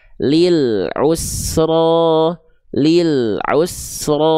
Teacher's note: yang betul lil'u tanpa adanya pantulan